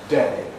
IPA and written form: deɪ (day)